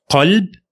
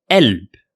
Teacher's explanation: another one is ق in Egypt, we used to convert it into أ